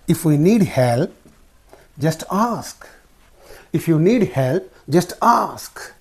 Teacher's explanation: So this if clause part receives the falling intonation. This main clause part receives the rising intonation. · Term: fall and rise intonation